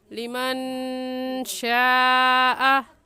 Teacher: इस मद को हम 4 अलिफ के बराबर खींचेंगे, इससे कम या ज़्यादा नहीं खींचेंगे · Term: मद्दे मुत्तसिल